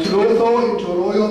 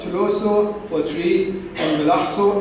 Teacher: The intertentals are preserved in Turoio, but shifted to the corresponding sibilants in Melaxo.